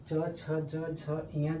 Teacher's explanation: च छ ज झ य जो होता है इसको तालू या तालव्य बोला जाता है